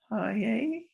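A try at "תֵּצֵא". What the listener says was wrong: Te, say. That's a tzaddik. Remember the tzaddik and the ayin look similar.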